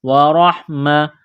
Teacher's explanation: را کو موٹا کرنا ہے زبر کی وجہ سے